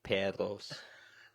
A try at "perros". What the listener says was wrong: You got to roll your R's. Twice.